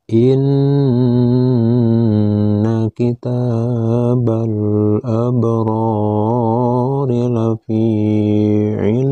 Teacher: pembahasan Mad tamkin ini harus dibaca panjang sampai 6 harkat karena membacanya dihentikan dan berada di posisi akhir ayat maka membacanya harus dibaca panjang 2 sampai 6 harakat